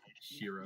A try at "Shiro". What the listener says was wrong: You missed a D in there. No, that's just you mispronouncing it. Last time I checked, Scottish people knew how to pronounce D.